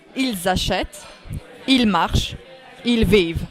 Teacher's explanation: It is ent in the end, but you don't hear it.